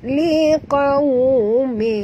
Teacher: Bil haqqi liqaw, huruf qaf tebal, ya. Qaw dan waw sifatnya lin, lembut. Liqaw, muncungkan mulut.